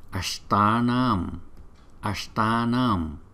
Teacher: chữ T có dấu nặng là chúng ta phải đọc từ trong cuốn họng